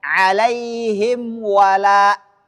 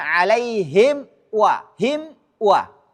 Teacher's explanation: penyatuan makhraj huruf mim dengan huruf waw sama-sama di dua bibir